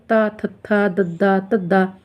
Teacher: ਸਾਡੀ ਜਿਹੜੀ ਜੀਵ ਹੈ ਉਹ ਦੰਦਾਂ ਦੇ ਨਾਲ ਟੱਚ ਕਰਦੀ ਹੈ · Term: ਦੰਤੀ